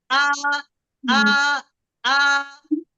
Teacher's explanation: आ कर रही हूँ, मेरा वोकल कॉर्ड बंद होकर खुल रहा है। आ आ, झटके से रोक रही हूँ तो मेरा वोकल कॉर्ड बंद ही हो जाएगा।